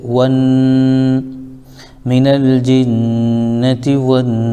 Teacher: الف لام کے بعد حروف شمسی میں سے نون آ رہا ہے، اس لیے واو کو ڈائریکٹ نون میں ملا دیں گے · یہ الف مدہ ہو جائے گا، لیکن سین آیت کی وجہ ساکن کر دیں گے یعنی وقف کر دیں گے تو یہ مد عارض ہو جائے گا